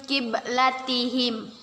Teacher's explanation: Nun mati atau nun sukun bertemu dengan huruf qaf. Kita baca dengan samar-samar dan kita tahan 2 harokat. Kita sebut nun sukun bertemu dengan qaf, hukum bacaannya ialah ikhfa.